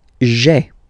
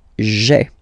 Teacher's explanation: we had this je, personal pronoun, and then when it comes near another vowel like a, for instance, then it tends to disappear